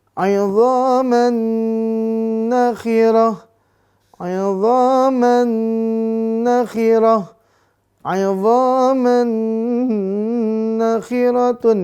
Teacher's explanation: Maka dibaca dengung 2-3 harokat.